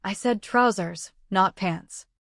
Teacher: Give trousers the contrastive stress if you are correcting the risky word.